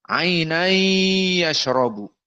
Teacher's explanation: Idgham dengan masuk kepadanya khaysum.